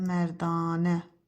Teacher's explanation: bir dənə A uzun tələffüz olunur